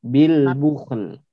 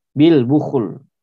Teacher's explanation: Ya. Ada kho sukun, kemudian lamnya juga dibaca tipis ya.